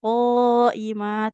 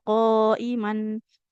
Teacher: Nah, dibacanya dua harakat qoimah, tidak qoiman. Jadinya mad iiwat panjang dua harakat.